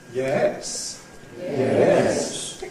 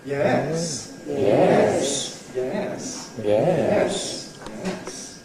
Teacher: It starts in the middle, goes up and down. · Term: rise fall